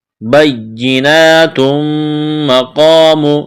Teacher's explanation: میم مشدد ہے، غنہ کریں گے، آواز ناک میں چھپائیں گے